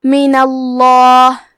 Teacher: کلمت من کے آخری میں نون پہ زبر ہے، لہذا لفظ الجلالہ کے لام کا حکم ہے تفخیم تو ہم حرف اللام کو موٹی آواز میں پڑھیں گے